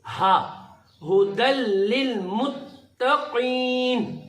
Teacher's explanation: یہ ہا چشمی ہا ہے, اس کو ہم پڑھیں گے سینے کے زور سے, یہ نکلے گا سینے سے